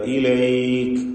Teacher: ഏതായിരുന്നാലും ഇലൈക്ക് എന്ന നാല് ഹറക്കത്തിന്റെ അളവ് കൊടുത്തു നിർത്തുക അതാണ് കൂടുതൽ നല്ലത് [സംഗീതം] അലിഫുകളെ ശ്രദ്ധിക്കുക എല്ലാം ഇസ്തിഫാലിന്റെ അക്ഷരങ്ങളെയാണ് ദീർഘിപ്പിക്കുന്നത് എന്നതുകൊണ്ട് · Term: മത്തു ലീനാണ്